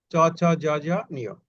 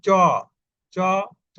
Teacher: এইগুলো উচ্চারণ করার সময় জিহ্বার অগ্রভাগে বা চ্যাপ্টা ভাবে তালুর সম্মুখ ভাগের সঙ্গে ঘর্ষণ করে, এই জন্য এদের নাম হয়েছে তালব্য স্পর্শধ্বনি।